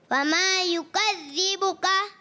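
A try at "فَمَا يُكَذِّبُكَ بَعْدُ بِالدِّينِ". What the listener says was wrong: کاف باریک رکھیں، کاف کچھ موٹا سمجھ میں آ رہا ہے.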